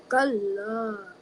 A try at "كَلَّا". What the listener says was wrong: Yeah, make the calf a little bit more gentler, softer. Kalla.